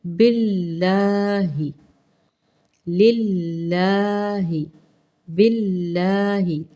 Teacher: اندر ہی لام کے نیچے زیر ہے، لام زیر لام لل، لا مقدار ویسے ہی لمبی کرنی ہے لیکن باریک پڑھنا ہے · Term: جلالہ باریک